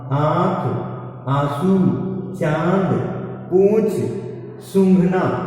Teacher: तो जिन अक्षरों का उच्चारण, जिन अक्षरों के उच्चारण में बोलते समय, जिन अक्षरों को बोलते समय नाक और मुंह, नासिका और मुंह दोनों की सहायता लेनी पड़ती है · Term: चंद्र बिंदु